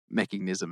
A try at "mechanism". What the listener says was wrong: I just want to say it's mechanism. No, you're saying meching. Yeah, you're adding like an ing.